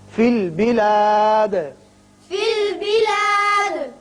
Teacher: دال پر قلقلہ کریں گے اس لیے کہ یہ وقت کی وجہ سے ساکن ہو رہا ہے